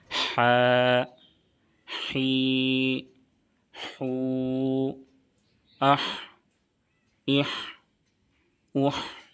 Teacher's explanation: مخرج ہے وسط حلق یعنی حلق کا درمیانی حصہ۔ · हा का मखरज है वस्ते हलक यानी हलक का दरमियानी हिस्सा। · ہا کی ادائیگی کے دوران بالکل صاف ہوا کی طرح آواز باہر آنی چاہیے،